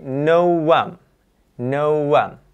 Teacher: Nah, u akhiran bunyi u ketika bertemu dengan a, maka nanti dia ada kata w, ada suara w di tengah-tengahnya.